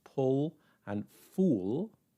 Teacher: in Scottish English, they will be pronounced with the same vowel